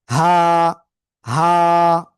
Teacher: এই অক্ষরটা কোন জায়গা থেকে উচ্চারিত হবে, গলার শুরু থেকে হা, এক আলিফটা নিয়ে উচ্চারণ করব, হা, হা।